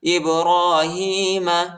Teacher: حمزہ کو با کے ساتھ ملائیں گے، قلقلہ بھی کریں گے